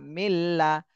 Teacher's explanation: নুন সাকিনের পরে এটা হলো ইদগামে বেলা গুন্নার হরফ, এজন্য গুন্না ছাড়াই মিলাতে হবে।